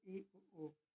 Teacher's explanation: जिन स्वरों का उच्चारण करते समय जिह्वा का अगला भाग अधिक ऊंचाई पर उठता है, उसे समृद्ध स्वर कहते हैं